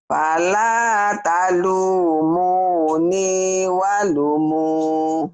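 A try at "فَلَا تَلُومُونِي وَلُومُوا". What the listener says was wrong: Lu-nya panjang.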